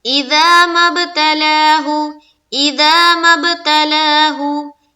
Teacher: اِذَا مَا ابْتَلَاهُ، اِذَا مَا ابْتَلَاهُ، اِذَا میں الف مدہ، میم کو با سے جب ملائیں گے تو با میں کریں گے قلقلہ